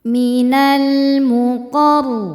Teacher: Kemudian ada alif lam qamariah. Sebab alif lam menghadapi huruf qamariah yaitu mim. Maka lam dibaca jelas. · Rnya dibaca tafhim karena berharakat fathah maka rnya tebal. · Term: alif lam qamariyah